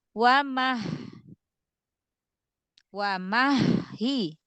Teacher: Hati-hati, haknya ada tasydid, berarti haknya ada dua